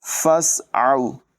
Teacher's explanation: سین میں سیٹی کی آواز نمایاں ہوگی